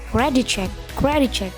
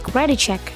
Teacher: Jadi cara membacanya adalah credit check. Jadi T-nya seolah-olah masuk atau menyatu dengan C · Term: konsonan plus konsonan